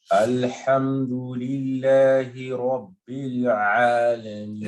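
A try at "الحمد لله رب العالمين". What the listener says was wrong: Again, you bounce the lamb. First one. You bounce the first time this time. The first one. All this time you've been doing the second one. This time you bounce the first one.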